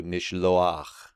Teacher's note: We retain that historic long holem vav, but then we get this furtive patach, which is the patach that's just kind of scooted over slightly, and it's a vocalic glide into that guttural in order to get that ah sound. So nishloach, because they prefer that a sound.